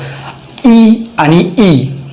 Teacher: ई आणि ई ह्या स्वरांचा जर उच्चार पाहिला तर तो टाळूवरती होतो, म्हणून या वर्णांना आपण तालव्य वर्ण असे म्हणतो. म्हणजे ज्या ठिकाणी आपण म्हणजे जिभेवरती ज्या ठिकाणी आपण चिंच चघळतो तो भाग जर आपण पाहिला तर त्याला आपण टाळू असं म्हणत असतो.